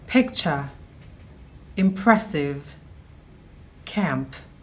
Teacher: This is a Fortis bilabial plosive sound.